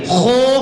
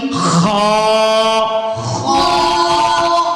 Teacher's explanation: منہ گول نہیں کریں گے، خو کی آواز نہ آئے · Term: حروف مستعلیہ